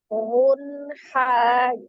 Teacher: huruf nun sifatnya adalah tawassul, dialirkan sebagian. Jadi tidak ditahan, tapi bunyi huruf nunnya mengalir. Unha, dia tidak terputus. · huruf H adalah salah satu huruf yang keluar dari tenggorokan, tepatnya tenggorokan bagian tengah ya. Maka dia dihukumi izhar halqi, dibaca dengan jelas ya, tidak ditahan.